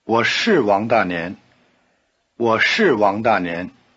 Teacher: when it is emphasized, as in yes, I am, 是 keeps its long R sound and the falling tone.